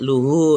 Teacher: Hak dhamir yang ini dibaca panjang, mad silah qasirah.